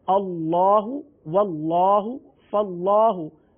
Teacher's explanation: یہاں پر اللہ عز و جل کے لام سے پہلے حرف پر زبر آ گیا، لہذا یہاں اللہ عز و جل کے لام کو پر پڑھیں گے.